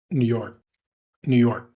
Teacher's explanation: we're holding the K sound since it's not followed by a vowel.